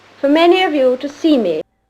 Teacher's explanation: When the Queen says you, it has that deep, full owl-hoot resonance with the back of the tongue quite high.